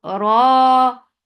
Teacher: Ra is heavy. Make it 2 counts long.